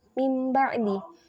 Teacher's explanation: tanwin yang berubah menjadi mim di atau bertemu dengan huruf ba maka dibacanya berubah menjadi mim yang diikhfakan pada huruf ba disertai dengan gunah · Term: iqlab, iklab